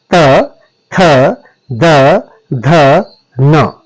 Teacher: जीभ का संपर्क दांत के साथ करना पड़ेगा। तब आपके त वर्ग का उच्चारण होता है। · जब जीभ का संपर्क दांत के साथ होता है तब आपकी दंत्य वर्णों या दंत्य ध्वनियों का उच्चारण किया जाता है। दंत्य ध्वनियां कौन कौन सी होंगी, इसमें त वर्ग पूरा आएगा, त, थ, द, ध, न।